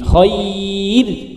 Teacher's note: Tapi nek khairun kalau dibaca wasol menjadi tebal, tapi kalau dibaca waqaf menjadi tipis.